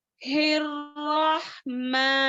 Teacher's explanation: माँ खड़ा जबर में है, इसको 2 मिक़दार में खींचेंगे